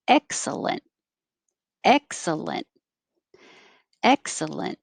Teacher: the stressed syllable is eck but we're not going to say the k excellent excellent excellent it can be lunt or lint doesn't matter · in this case, excellent, the stressed syllable is ek, but we're not going to say the K.